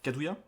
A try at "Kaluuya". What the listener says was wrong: Kaluuya, c'est un L. Kaluuya.